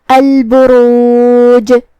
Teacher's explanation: جو کہ ہم اس پہ روکیں گے تو جزم سے روکیں گے لہذا یہاں جیم کا حکم ہوا قلقلہ. قلقلہ کا معنی ہے حرف ساکن کو ہلانا تو ہم جیم کو ہلاتے ہوئے یہ کلمہ کو پڑھیں گے